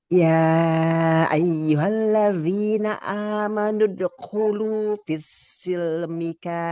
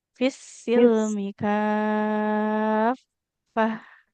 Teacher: Jadi huruf fanya harus mengalir dulu suaranya kan fa bertasydid ya mengalir suara dan juga nafasnya.